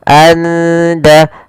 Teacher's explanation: Karena di sini kita baca samar di antara izhar dan idgham. Maka suara nunnya samarkan ke da. Anda langsung ke da. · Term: ikhfa hakiki